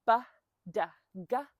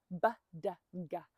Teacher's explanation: you'll feel that those consonants are traveling from the front of your mouth to the back of your mouth.